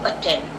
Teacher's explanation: we do not pronounce this other T. There are A-T-T-E-N-D right here, but we only pronounce one T